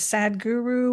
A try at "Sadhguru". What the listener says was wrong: You say his name like it's 2 different names. Sadhguru. Well, it's Sadhguru.